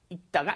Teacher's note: The 리을 발음 is not pronounced. There's no L sound. You just say 읽다가, as in when you just pronounce the basic form.